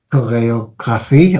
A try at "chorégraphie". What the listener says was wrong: Alors, c'est chorégraphie. C'est pas choréographie.